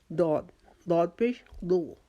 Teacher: اپنی زبان کا بایاں کنارہ اوپر والی داڑھوں کے ساتھ لگائیں، 5 داڑھوں کے ساتھ، گننے کی ضرورت نہیں، آپ لگائیں گے تو آٹومیٹکلی آپ کی زبان ادھر ہی لگ جائے گی.